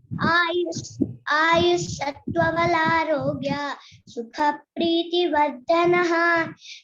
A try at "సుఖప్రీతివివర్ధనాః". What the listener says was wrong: వివర్ధనః వర్ధనః కాదు, వివర్ధనః దీర్ఘం ఉంది నాకు. సుఖ ప్రీతి వివర్ధనః.